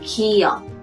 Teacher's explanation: Pour prononcer Kia, vous ne devez pas fermer vos cordes vocales. Vous ne donnez aucune tension à votre glotte et votre langue touche la partie arrière de votre palais. Vous détachez votre langue en expirant l'air et en fermant la voix vers votre cavité nasale. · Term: la consonne de base